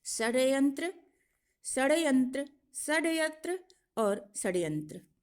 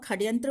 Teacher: यहाँ मूर्धन्य स को कुछ लोग ख का भी उच्चारण करते हैं और खड्यंत्र बोलते हैं, कुछ षड्यंत्र बोलते हैं।